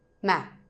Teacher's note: So, the question tone goes lower.